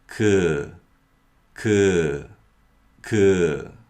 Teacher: kiock is a voiceless sound with mild aspiration meaning that there is no vocal chord vibration and the sound is produced with some air coming out of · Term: 기역